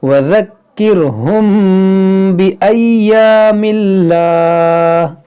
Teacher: میم ساکن کے بعد حرف با ہے تو یہاں پر کیا ہوگا؟ اخفاء شفوی, یعنی یہاں پر غنہ کریں گے